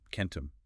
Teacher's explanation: But as people spoke faster over generations, the brain tried to save split seconds of time. The tongue begins anticipating that front E vowel before it has even finished pronouncing the back K consonant. It jumps the gun.